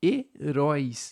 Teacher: Esse ditongo decrescente oi não se separa. Então, já vai ser heróis.